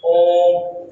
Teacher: ऐसे स्वर वर्ण जिनको बोलने में 2 से अधिक मात्राओं का समय लगता है, या ह्रस्व से 3 गुना समय लगता है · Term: पुरुष स्वर